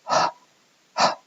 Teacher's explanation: That is a fricative caused by partially closing your glottis without vibrating it, and so you get the h, hissy sound.